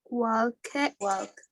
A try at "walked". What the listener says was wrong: Walked. Con esa T al final. Como si tuviera que no existiera esa E.